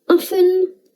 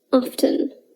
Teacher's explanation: usually we don't pronounce the letter t in often but some people do pronounce the t they say often oxford and cambridge dictionaries accept either pronunciation so